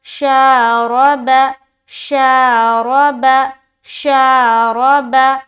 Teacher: तो हिज्जे करेंगे, शीन अलिफ ज़बर शा, रा ज़बर रा, रा को पुर करके पढ़ेंगे, मोटा करके, उसके ऊपर ज़बर है, बा ज़बर बा, शारबा, शारबा, शारबा।